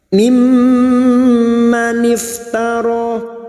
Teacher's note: mim yang bertasdid gunnah musyaddadah, kita dengungkan selama 3 harakat.